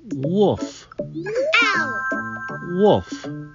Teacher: you almost don't hear that l